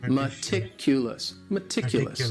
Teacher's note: the stress is on that second syllable